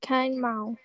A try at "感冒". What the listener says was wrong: Gan, no ke, gan mao.